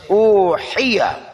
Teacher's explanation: حا وسط حلق سے. اوحیہ، اوہیہ نہیں کہنا، اوہیہ.